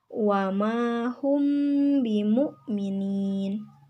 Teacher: Cara membaca ikhfa syafawi yaitu samar-samar. Artinya, pada saat membaca mim sukun, disamarkan antara mim dan ba dan terdengar seperti dengungan